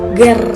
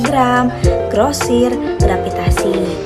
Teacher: cara melafalkannya yaitu dari dorsovelar bersuara berpindah kepada apiko-alveolar getar dengan tempo yang sangat cepat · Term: gugus konsoid GR